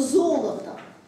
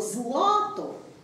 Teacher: В русском языке мы имеем на этом месте два гласных – «оро» или «оло». А в сербском языке, так же, как и в церковнославянском языке, мы на этом месте имеем «ра» или «ла». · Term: Полногласие